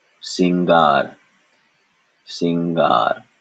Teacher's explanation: there is no nasal vowel in this at all it is just a n conjunct with G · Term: N conjunct with ga